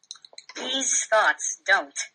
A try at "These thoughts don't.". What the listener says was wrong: Okay, yeah, you did the exact same thing again. You said don't well, but these thoughts was very lacking in the oomph department. These thoughts don't. Just like that.